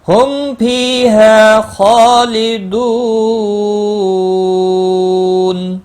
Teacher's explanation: ہم میم ساکن کے بعد فا ہے، اظہار شفوی ہوگا، غنہ نہیں کریں گے